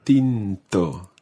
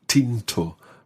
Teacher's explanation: that t's in spanish are slightly different from teas in english in spanish you take your tongue and put it in between your teeth rather than up on the hard part of your mouth up above your teeth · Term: soft t's